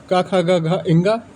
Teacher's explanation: क वर्ग क ख ग घा जो कि कंठ से उच्चारण होता है